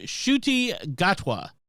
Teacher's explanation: english speakers in great britain have just had difficulty making that initial n sound and it has dropped off the name